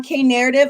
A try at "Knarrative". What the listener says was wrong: The K is silent like knowledge. The K is silent. So it's just narrative.